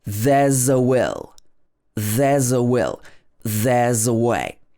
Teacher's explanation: The S in there's actually changes to z.